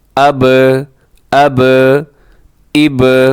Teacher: جب ان کے اوپر جزم ہوتی ہے تو آپ نے ان حروف کو ہلانا ہے اور تھوڑا سا ان حروف کو جنبش دینی ہے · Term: حروف قلقلہ